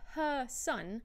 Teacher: you don't pronounce the r at the end of her because it's followed by a word starting with a consonant